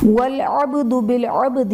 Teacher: والعبد بالعبد میں با حرف قلقلہ ساکن ہے تو یہاں پر قلقلہ خوب ظاہر کریں گے